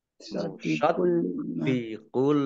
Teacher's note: Dalnya dibaca double, ada tasdidnya